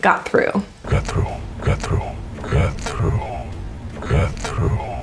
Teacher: notice the downward intonation at the end of a statement always downwards